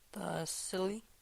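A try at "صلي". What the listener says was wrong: Sili. Be careful. If you pronounce it with an S, it'll be different.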